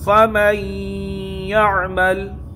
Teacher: نون ساکین کے بعد حروف یرملون میں سے یا آیا ہے، اس لیے یہاں ادغام ہوگا اور گنہ کے ساتھ ہوگا۔ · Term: ادغام مع الگنہ